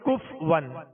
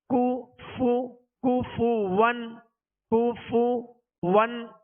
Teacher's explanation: کاف پر پیش ہے، فا پر پیش ہے، دونوں کے پیش یہ صحیح سے ادا کریں گے، ہونٹوں کو گول بھی کریں گے اور بغیر کھینچے بغیر جھٹکا دیے معروف ادا کریں گے.